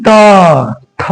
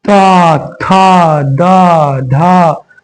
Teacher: जीभ कहां जा रहा है तुम्हारा, दांत पे जा रहा है ना